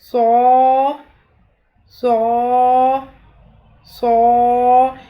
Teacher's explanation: صاد، حروف مفردات کی ادائیگی میں بھی یہ چیز ہم نے سیکھی تھی کہ صاد کی ادائیگی میں زبان کی نوک کو سامنے والے نیچے کے دو دانتوں کے کناروں سے مضبوطی کے ساتھ لگاتے ہوئے زبان کے پچھلے حصے کو تالو کی طرف بلند کریں گے، اور یہ سیٹی کی سی آواز آئے گی، لیکن پر آواز ہوگی، باریک آواز نہیں ہوگی۔